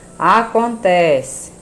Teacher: Acontece, a sílaba tônica penúltima